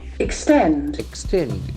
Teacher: Here the accent falls on the second syllable.